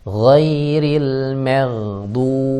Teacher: mim tipis, ghain tebal, dan ro-nya mengalir